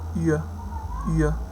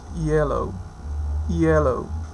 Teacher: y, y, which is voiced. Lingual palatal, glide, and the example that we have is yellow, yellow.